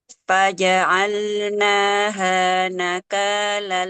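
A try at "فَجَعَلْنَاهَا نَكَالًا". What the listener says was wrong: Kurang panjang naknya. Nah, panjangnya harus sama seperti H.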